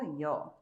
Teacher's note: tenemos que juntarla y con la o se vuelve un diptongo